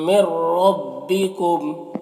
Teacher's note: یہاں پر نون ساکن کے بعد را ہے حروف یرملون میں سے تو نون کو را سے ملا کر بغیر غنہ کے پڑھیں گے، اس کو ادغام تام کہتے ہیں.